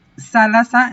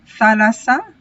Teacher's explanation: la pronunciación aspirada de la teta en el dialecto lacónico ha producido en Alcman un cambio a sigma